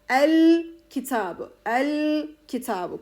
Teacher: oradaki o sakin lamı belli edeceğiz